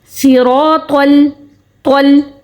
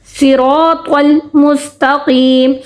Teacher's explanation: ہم نے تو کی جو اپنا تو کو ہم موٹا حرف کہتے ہیں، حروف مستعلیہ کہتے ہیں، تو ہم نے اس کے تو کو موٹا پڑھ کے لام کو باریک ہی پڑھا. طل مستقیم، صراط المستقیم، صراط الذین، الذین، الذین نہیں پڑھا، لام کو موٹا نہیں پڑھا، ٹھیک ہے.